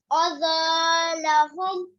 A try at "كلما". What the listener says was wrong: مد کدھر ہے کلما یہاں پہ مد ہے کلما